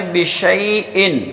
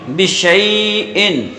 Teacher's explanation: شین کو جو ہے ہم بیچ زبان اور تالو کا بھی بیچ کا حصہ، وہاں پر ہم جب زبان کو لگاتے ہیں تو شین ادا ہوتی ہے